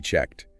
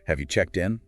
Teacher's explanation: The ed ending on checked often sounds like a soft T · That voiceless T sound after the voiceless K sound